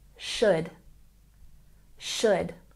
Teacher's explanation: when we pronounce this word we don't say the L